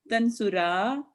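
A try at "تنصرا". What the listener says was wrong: No tansura. No dhamma at the end.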